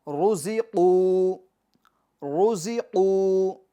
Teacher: یہ را کو بھی ہم کیا کریں گے؟ پور پڑھیں گے، کیونکہ را کے اوپر کیا ہے؟ پیش ہے۔